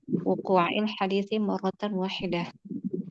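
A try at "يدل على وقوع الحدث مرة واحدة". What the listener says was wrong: Nah, bukan hadis tapi hadas.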